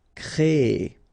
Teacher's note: So it's quite interesting, sorry, here, because first you will have this C-R-E accent aigu, so you get the créer sound, and after that you get this E-R sound, so E. So technically you will have this double E sound, créer, okay, so it's longer